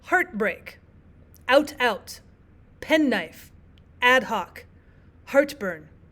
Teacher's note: uh but therefore their syllables are probably all equally stressed or all equally unstressed. There's no stressed and unstressed syllable in spondic pattern. All syllables have equal stress. · all syllables have equal stresses on them. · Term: spondaic pattern